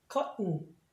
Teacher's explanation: 예를 들면 또 액센트 여기 있고 t하고 t 두 번 있다고 해서 발음 두 번 하는 거 아니고 한 번밖에 안 하니까 t하고 n 사이에 모음이 있는데 액센트가 없으면 마치 콧소리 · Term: t의 비음화 현상